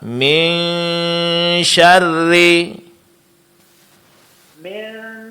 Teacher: Jadi bunyi nun di sini di samping didengungkan dia juga disamarkan. Caranya jangan disentuh makhraq huruf nun ya. · Dengung ikhfa. Nun mati bertemu dengan syin. Nunnya disamarkan